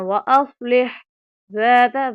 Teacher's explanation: ذال کو باریک پڑھیں گے نرمی کے ساتھ